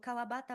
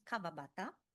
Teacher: the pronunciation of the syllable wa is pronounced very frequently as va. So kawabata becomes kavabata.